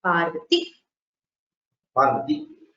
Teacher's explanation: The Dirgha Ikara becomes Hrasva Ikara.